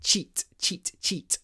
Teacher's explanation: And again here we have two "ch" "ts" "ch" "ts" two consonants which are kind of aspirated with a lot of breath. "Ch" "ts".